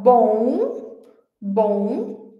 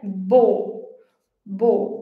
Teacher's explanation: a gente tinha o som nasal bom, bom, e esse aqui é bo, bo, como o do português